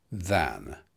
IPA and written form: ðæn (than)